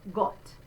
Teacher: You see I do have my pucker, O, but it's a bit more open than O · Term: open O